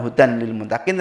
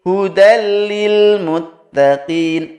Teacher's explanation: huruf nun mati dileburkan tanpa dengung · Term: idgham bilagunnah